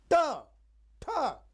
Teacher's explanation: मूर्धा माने उलटना जब जीभ को आप पीछे मोड़ते हैं